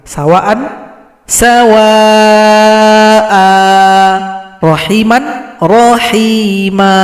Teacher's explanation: mad yang terjadi karena kita berhenti pada fathatain panjangnya juga sama dua harakat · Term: mad iwad